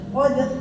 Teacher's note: Jadi ya sekali aja geternya tuh udah qadar ada ya. Geternya tuh hitungannya sekali geter.